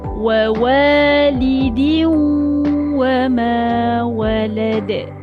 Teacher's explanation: Masuk pada huruf waw. Dah muncung dah bibir. Dan kena lama sebab nak bagi dengung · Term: Idgham ma'al gunnah